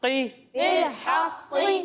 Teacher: तो यहाँ पर चूंकि कौफ है तो इसे हम मोटा कर कर पढ़ेंगे